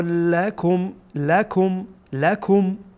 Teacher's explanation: میم کاملا واضح میکنیم، آشکار ظاهر میشه